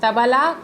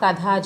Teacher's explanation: త అనున్నది అల్ప ప్రాణాక్షరం థ ఒత్తు థ అనేది మహాప్రాణాక్షరం